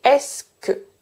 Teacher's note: Donc le « e » du « ce », je ne le prononce pas.